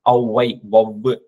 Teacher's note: அவ்வும் சொல்லுல வரும்போது தனக்குரிய இரண்டு மாத்திரையிலிருந்து ஒன்றரை மாத்திரை அளவு குறுகி ஒலிக்கும் இதுவும் வந்து இந்த அவ்ன்ற எழுத்து வந்து சொல்லுக்கு நடுவுல நடுவுலயோ நடுவுல வராது